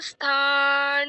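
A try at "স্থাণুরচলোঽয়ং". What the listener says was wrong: খুব সুন্দর হয়েছে একটু ভুল আছে স্থান বলছো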